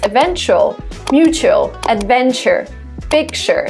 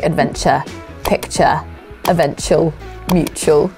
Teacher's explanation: Americans also pronounce ch instead of t in such words as eventual, mutual, adventure, picture.